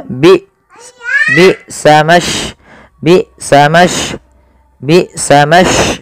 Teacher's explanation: Maka ketika hamzah sukun harus ada penahanan suara dan penahanan nafasnya